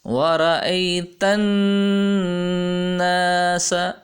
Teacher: وَرَأَيْتَ، یہاں پہ نون کے اندر غنہ ہو رہا ہے، یعنی نون کی آواز کو ناک میں ظاہر کریں گے اور اس میں گونج ہوگی